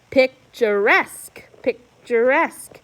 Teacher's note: we punched the last syllable